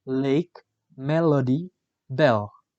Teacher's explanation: The description of l is voiced alveolar lateral approximant.